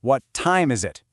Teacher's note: For a what question, your voice drops.